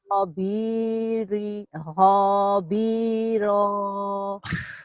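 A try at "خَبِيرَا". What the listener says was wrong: Hob, banyak pendek Bu, banyak panjang Bu. Hobi hiro. ro-nya panjang juga kan, ada alif tuh.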